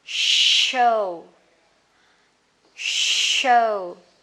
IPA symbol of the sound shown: ʃəʊ